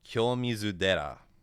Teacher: You voice the first syllable, so it turns the T into a D. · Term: rendaku